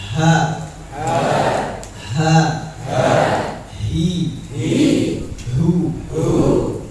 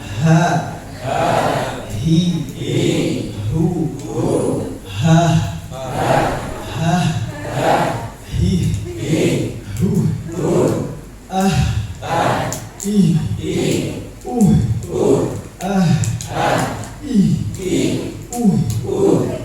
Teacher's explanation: Keluarnya juga sama di pangkal tenggorokan seperti huruf hamzah.